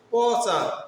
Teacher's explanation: পচা উচ্চারণ করতে গেলে কিন্তু নাক দিয়ে বেরোচ্ছে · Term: অনুনাসিক বর্ণ